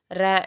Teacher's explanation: நாவின் நுனி மேல் அண்ணத்தின் முதல் பகுதியை தொட்டு வருவதால் ரகரம் தோன்றும்.